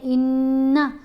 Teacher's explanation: غنہ کرتے ہوئے آواز ناک میں جائے گی اور 1 حرکت کے برابر ٹھہر کر پڑھا جائے گا